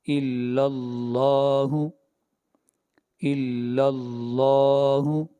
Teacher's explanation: لفظ اللہ سے پہلے فتح آ رہی ہے، زبر آ رہی ہے، اس لیے لفظ اللہ کو موٹا پڑھیں گے